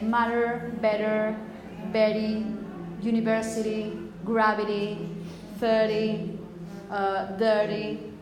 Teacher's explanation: So a kind of R. It's not exactly an R, but it's a kind of flap R, like rolling the R more or less. So it could be something as I say, matter, better, Betty, university, gravity, 30, dirty.